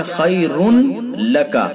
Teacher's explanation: تو تنوین کو ہم نے تنوین کا لام میں ادغام کیا اور مکمل ادغام کر دیا کہ تنوین کی کوئی صفت باقی نہیں رہی۔ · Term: ادغام تام